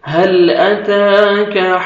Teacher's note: هل أتاك حديث الجنود، هل ہا کو اپنے سے مخرج سے ادا کریں گے، ہل ہا میں تاکہ ساؤنڈ مکس نہیں ہونا چاہیے، حل نہیں پڑھیں گے، ہل لام کو آپ نے ہلانا نہیں ہے، هل أتاك تا کو باریک پڑھیں گے اور فتحہ الف صغیرہ 1 سیکنڈ آپ نے تا کو کھینچنا بھی ہے